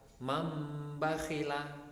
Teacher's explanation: Iqlab yaitu jika ada nun sukun atau tanwin bertemu dengan huruf ba. Kemudian nun sukun atau tanwin ini diganti dengan suara huruf mim. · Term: hukum iqlab